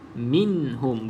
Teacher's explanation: pegangkan dia betul-betul pada makhraj nun. Okey, lepaskan pada makhraj dia bila mana kita nak sebut huruf ha yang seterusnya.